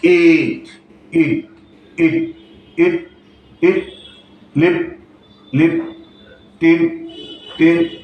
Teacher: ঠোঁটটা half close থাকে এবং স্টেট পজিশনে থাকে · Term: শর্ট সাউন্ড